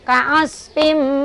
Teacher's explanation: Idgham bigunnah. Dimasukin sambil dengung. Tahan.